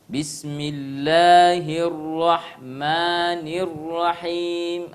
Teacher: Harusnya 2 harakat, itu tadi seakan-akan 3 harakat. Ya, jadi jangan terlalu panjang. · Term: mat tabi'i